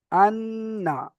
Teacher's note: নুনের উপর তাসদিদ এসেছে, নুনকে একালিফ গুণনা করে পড়তে হবে